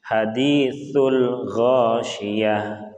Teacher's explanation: sa itu kita tahan dengan lidah yang berada di antara dua gigi. Jadi sa itu sin, ya, sa ada desis yang keluar dari gigi.